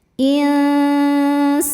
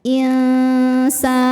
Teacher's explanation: Mad tabi'inya alif didahului fathah, kemudian huruf yang disukunkannya nun. Maka sinnya ini panjang, boleh 2 atau 4 atau juga 6 harokat asal konsisten dalam satu kali baca. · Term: mad arid li sukun